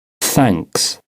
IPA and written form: θæŋks (thanks)